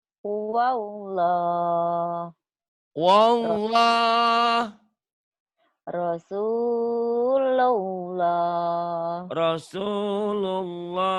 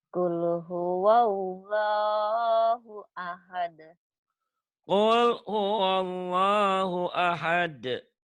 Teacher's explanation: membaca lafaz Allah. Lafaz Allah dibaca tebal, tafkhim, apabila sebelum lafaz Allah baris di atas.